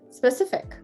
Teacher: this e is not going to be an e y sound it's going to be an e h sound so actually you've got e h i h i h h